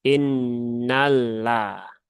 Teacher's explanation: lam bertasydid itu jangan ditahan lama-lama ya